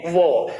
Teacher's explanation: इसके बाद यदि बात करेंगे वो की, वो, तो ध्यान दो वो को बोलते समय हमारी जो ओष्ठ है उसकी आकृति गोल हो रही है, तो इसको हम कहेंगे क्या, ये ओष्ठ है, हो जाएगा आपका वो।